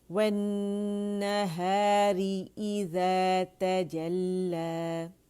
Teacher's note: وَالنَّهَارِ إِذَا تَجَلَّى، لا کر کے نہیں پڑھیں گے، لا باریک ہے، ٹھیک ہے. امالہ نہیں کریں گے بلکہ آواز اوپر کی طرف جائے گی، زبان فلیٹ ہوگی نیچے، ٹھیک ہے. زبان کی جڑ بھی نیچے ہوگی، ٹھیک ہے، اور زبان کا درمیانی حصہ بھی.